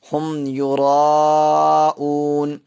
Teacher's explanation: آ رہی ہے، اس لیے یہاں پہ کیا ہوگا، اظہار شفوی، یعنی میم ساکن کی آواز کو ظاہر کر کے پڑھیں گے